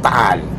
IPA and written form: taʔal (Taal)